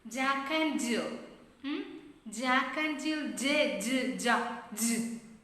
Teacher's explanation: It is voiced. It is voiced. Affricate sound.